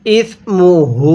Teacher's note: হা এর মধ্যে এক আলিফ টান দিব। যদি হা জমিরের উপরে এরকম উল্টা পেশ থাকে তাহলে সেখানে এক আলিফ টানতে হবে।